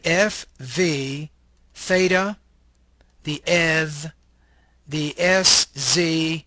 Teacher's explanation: of consonant sounds made by almost completely obstructing the vocal tract the small opening through which the air passes is small and consequently turbulent noise is produced